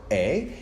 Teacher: that's actually a mid low front vowel